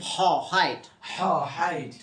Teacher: হলকের মধ্যখান হইতে উচ্চারিত হয়